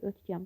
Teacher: K samiti G samitinə çevrilir.